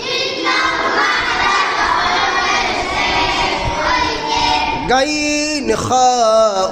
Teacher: 3 নং মাখরাজ হলকের শেষ হইতে। গাইন খা উচ্চারিত হয়।